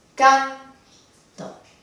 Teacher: La dividimos por sílabas entre la N y la T, canto, y la sílaba de mayor intensidad es no la última, sino la penúltima